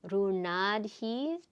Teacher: the ta or ta is voiced and aspirated